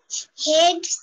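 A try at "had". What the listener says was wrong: হ্যাড, pronunciation হবে হ্যাড। হেড না, হেড অর্থ হচ্ছে মাথা, আর হ্যাড অর্থ ছিল। হ্যাড, প্রমি আবার আবার হ্যাড, হ্যাড।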